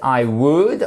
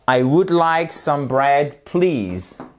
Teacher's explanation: I would, on ne prononce pas le L, très important.